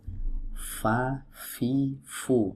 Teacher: Berikutnya huruf fa. Huruf fa ini adalah huruf yang keluar dari ujung-ujung gigi seri bertemu dengan perut bibir bawah.